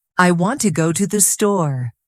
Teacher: Notice how want and store are stronger, while to the is weaker. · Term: stress-timed language, stress-timed